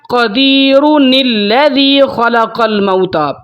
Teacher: نون قطنی ہمیشہ تب استعمال ہوگا جب ملا کر پڑھنا ہوگا